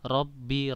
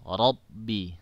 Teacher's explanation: harus ditebalkan huruf roh ketika dia bersifat halbert Boma itu di ditebalkan dengan cara diangkat pangkal lidah ujung lidah digetarkan kemudian pangkal lidah itu di diangkat ke langit-langit supaya bisa menebal Robby bukan hanya Robby Robby itu belum tebal tapi horobi ya